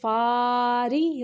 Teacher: را باریک پڑھیں گے، اس کے نیچے زیر ہے